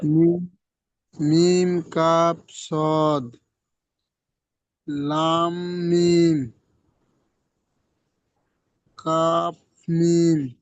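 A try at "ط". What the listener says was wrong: কাব নয়, তা, তা, তায়ের উপরে দুটি নোক্তা। তা ওখানে ছিল এরকমই, দেখেন এখানে তা ছিল এরকমই, এরকম তা ছিল, তায়ের উপর 2 নোক্তা ছিল এখানে।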